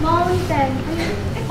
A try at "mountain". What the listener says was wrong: Oh, so close! Mountain. Almost correct. The ending. The end of the word is wrong.